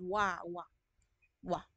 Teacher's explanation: velar naman wa dito sa iba sa lalamunan